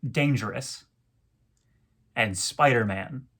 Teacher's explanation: is a three syllable foot with the pattern stressed unstressed unstressed words like dangerous and spiderman all have this stressed unstressed unstressed dactylic rhythm